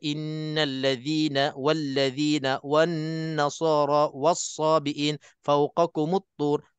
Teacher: lam langsung kita tak baca dah sebab dah diidghamkan sebagai idgham Syamsi jadi yang ini kita ambil hukumnya sebagai idram mutasilin ataupun mamailin